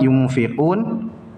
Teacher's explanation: ikhfa Hakiki dengunya samar masuk ke huruf selanjutnya yaitu Fa